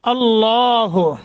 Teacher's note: لفظ اللہ کو منہ بھر کر پڑھنا ہے، موٹا کرنا ہے